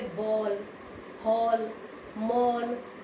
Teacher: ओ से ज्यादा और औ से कम तो बोलते तो वो ओ हो जाता है। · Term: आगत ध्वनियां